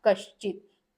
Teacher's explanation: पे एग्जांपल है कह प्लस चित तो ये हो जाएगा कश्चित विसर्ग के स्थान पे श आ गया है यहां पे क्योंकि सामने च छ आया हुआ है